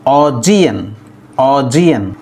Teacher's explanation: The stress is on the second syllable G.